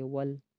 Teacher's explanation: لام کے اوپر جزم ہے، واو کو لام کے ساتھ ملائیں گے